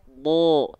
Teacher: Huruf bod ketika dilafalkan kan nggak kita baca da, tapi kita baca bo. Kenapa keluarnya vokal O? Karena dia termasuk ke dalam huruf yang tebal.